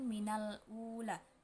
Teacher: alif lam qamariyah karena lam bertemu alif, cara bacanya lam dibaca jelas. Kedua, mat badal karena hamzah bertemu mat waw sukun, cara bacanya dipanjangkan dua harokat.